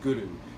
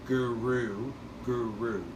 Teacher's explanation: So it sounds like this, Guru. You're hitting your tongue to the roof of the mouth by the back of the front teeth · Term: rolled R